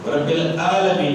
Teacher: اور عین پر ع عی عو، تو رب العالمین، رب العالمین پڑھنا ہے تو لوگ کیا پڑھتے ہیں اکثر جو جنہوں نے تجوید نہیں پڑھی، رب العالمین پڑھتے ہیں، حمزہ پڑھتے ہیں عین کی جگہ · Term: تبدیل حرف بالحرف